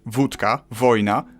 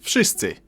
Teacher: W in wszyscy should sound like wódka, wojna, but it seems to soften up to an F